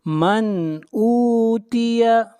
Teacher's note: من اوتیہ، من میم کو ظاہر کر کے پڑھیں گے، اظہار حقیقی ہوگا، اس لیے کہ نون ساکن کے بعد حروف حلقی میں سے حمزہ ہے